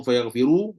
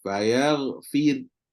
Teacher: Tapi kalau waqaf dengan sukun, jadi fayaghfir. Terus jadi nipis. Sebab apa? Sebab ra sukun, huruf sebelumnya berbaris, kasrah.